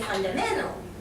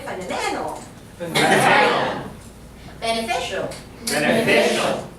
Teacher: So I say fundamental, and it goes down.